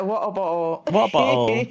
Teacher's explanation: Yeah, it's a glottal stop. Yeah, I'm part of the UK that says water bottle with no T